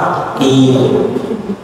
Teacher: Kemudian kasroh bunyinya i, rahang bawahnya turun menurunkan rahang bawah i